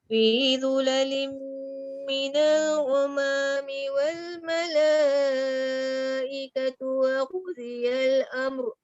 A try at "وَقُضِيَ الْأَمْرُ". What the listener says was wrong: Waqudi. Tebal sikit. Waqudiyal amr.